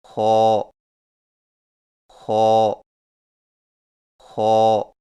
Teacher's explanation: خو کی ادائیگی میں زبان کی جڑ کو تالو کی طرف بلند کرتے ہوئے موٹی آواز میں پڑھیں